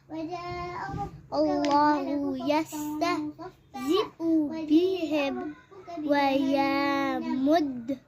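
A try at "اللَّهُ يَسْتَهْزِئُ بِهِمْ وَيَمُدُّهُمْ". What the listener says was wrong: اچھا, یا کو نا 1 کاؤنٹ سے زیادہ نہ کرے, ٹھیک ہے. 1 کاؤنٹ ہے رکھیے.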